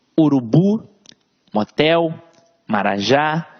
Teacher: veja que a sílaba tônica está sempre na última sílaba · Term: oxítona, oxítonas